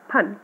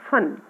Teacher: फन में अगर हम लोग यानी फ बोलते हैं तो उसमें हमारा ऊपर वाला होठ और नीचे वाला होठ दोनों टच करते हैं, फन। और अगर हम लोग नुक्ते वाला बोलते हैं तो वो शब्द होगा फन।